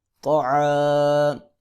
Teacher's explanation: طا جو ہے اس کو موٹا کر کے پڑھیں گے